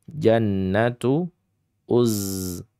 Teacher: Nanya itu ada gunnah musyaddadah. Ada dengung karena sebab tasydid.